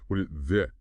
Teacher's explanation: This often gets really reduced and blended. The T in what might flap or drop. Did gets quick sound like one fast unit.